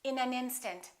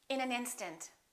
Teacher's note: We would connect the final consonant to the next vowel. So this N and this A would be said together.